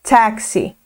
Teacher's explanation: tem aquele som entre a letra A e E